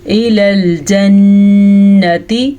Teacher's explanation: نون کا غنہ ادا کریں، نون کے اوپر شد آ گئی ہے